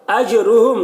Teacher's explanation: جیم میں قلقلہ ہو رہا ہے، جیم کی آواز ٹکرائے گی، ڈبل نکلے گی